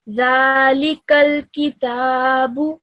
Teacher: You need to straight away join the kaf to the lam.